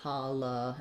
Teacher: first letter A says the ah sound so we have ha this letter O says the schwa sound